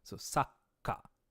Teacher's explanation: Okay, so this tsu, the small tsu, not a full one, is taking the ka and doubling it, and kind of like sa, take a small pause as you begin the k sound, sa, k, and then ka.